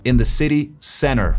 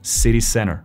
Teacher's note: ¿Viste ahí que hay muchos T's dentro de las palabras? Que en americano se pronuncia como una D.